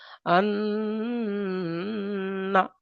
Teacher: আওয়াজটা নাকের উপরে একটু চাপতে হবে, নাকের মধ্যে আওয়াজটা একটু চেপে রাখতে হবে, চেপে রাখাটাকে গুণনা বলা হয়।